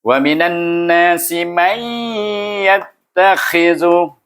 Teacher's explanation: Berjumpa lagi hukum idgham ma'al gunnah, baca dengan dengung. Dua harakah, masukkan mim dengan huruf ya dengan nakish, iaitu idgham nakish.